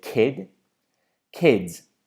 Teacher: the S is not actually pronounced as an S, as a S, but it's pronounced as a Z, as in the letter Z.